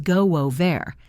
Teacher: It links as go wo ver. Notice the w sound that appears between go and over. This is a special link between two vowels.